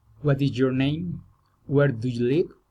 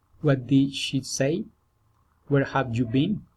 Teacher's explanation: Friendly interest, politeness, raising intonation.